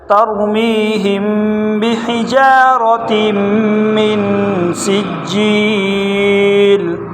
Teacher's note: وقف اس کو پڑھیں گے ترمیہم بحجارۃ من سجیل را موٹا بحجارۃ میں را موٹا ہے اور تم میں غنہ کریں گے دو تنوین ہے تو یہاں پر بھی غنہ کریں گے فجعلہم